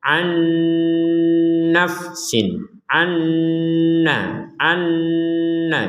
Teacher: nun sukun bertemu Nun maka kita masukkan Nun yang pertama ini kepada Nun yang kedua sehingga terbacanya langsung dimasukkan kepada Nun yang kedua dan itu diperkuat